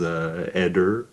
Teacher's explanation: That TH sound in French, I guess, is just hard. It always comes out like a D.